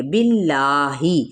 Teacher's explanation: جلالہ کا لام کھڑا زبر بھی ہے تو باریک پڑھا جائے گا، کیونکہ پیچھے دیکھے کیا ہے، زیر ہے۔ بعض لوگ کیا کرتے ہیں کہ اس کو باللہ ہی پڑھ دیتے ہیں، جو کہ غلط ادائیگی ہے۔